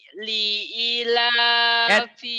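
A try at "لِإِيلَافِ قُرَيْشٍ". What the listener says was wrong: panjang dua-duanya. I sama la panjang, ayo. Li-nya pendek, li-nya pendek, i-nya doang. I sama la, ayo. Li'ilafi Quraisy.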